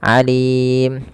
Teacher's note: apabila ada tanwin bertemu dengan huruf ain, maka dia harus diperjelas suara tanwinnya dan tidak boleh didengungkan ataupun malah dihilangkan tapi dijelaskan.